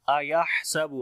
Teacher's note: हा को गले के दरमियान वाले हिस्से से पढ़ेंगे और सिफ्त हमस आएगी